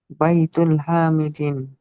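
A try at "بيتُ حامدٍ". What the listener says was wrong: না না, এখানে তো আলিফ লাম নেই।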